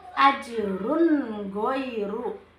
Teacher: terdapat dommatain bertemu dengan huruf goin sehingga dibaca jelas bunyi tanwinnya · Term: izhar